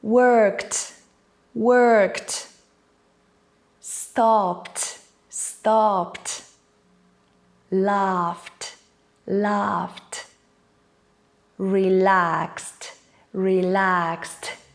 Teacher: the last sound before the ed ending is a voiceless sound, which means it does not vibrate in your throat.